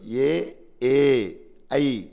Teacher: ఇందులో మొదటిది మాత్రమే హ్రస్వం ఈ రెండు దీర్ఘాల కిందకి వస్తాయి